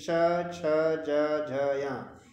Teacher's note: इनका उच्चारण स्थान है तालू या तालव्य